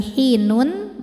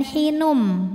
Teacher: Selanjutnya ada hukum idgham bi gunnah, karena ada tanwin dhammah menghadapi huruf mim. Cara bacanya, tanwin dileburkan ke mim disertai bunyi dengung. Jadi kita tidak membunyikan lagi hinun, melainkan hinum.